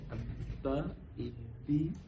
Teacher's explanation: یہ شد والے حرف کو ادا کرتے ہوئے تھوڑی دیر ٹھہریں گے، لیکن یہ با پر ہونٹوں کو اندر کی طرف موڑیں گے نہیں۔